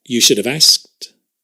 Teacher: notice we often drop the k right as well in asked